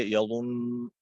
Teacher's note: کے اوپر جو تشدید ہے وہ تشدید باقی رہے گی، اور نون مشدد میں کیونکہ غنہ ہوتا ہے اس لیے اس کے اندر وقف کی حالت کے اندر بھی غنہ ہوگا · یظن، پھر بھی اس کے اوپر غنہ ہوگا، اس لیے کہ ساکن ہونے کی حالت میں نون کا اوپر جو پیش ہے یہ پیش ساکن ہو جائے گا لیکن نون کے اوپر جو تشدید ہے وہ تشدید باقی رہے گی